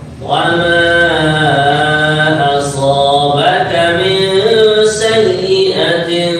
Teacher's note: ma adalah mad jaiz munfasil empat harakat